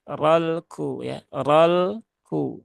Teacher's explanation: Kemudian di sini ada lam ta'rif lagi ya, seperti tadi, lam sukun. Nah, ini jangan ditekan berlebihan, jangan dipantulkan